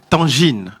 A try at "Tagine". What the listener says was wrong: Non, tu prononces mal. Il n'y a pas de N. c'est Tagine.